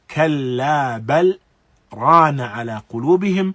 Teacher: there is a clear utterance of the lam of bal and a clear utterance and recitation of the ra of rana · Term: izhar